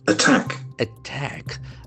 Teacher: we have two syllables and the accent falls from the second syllable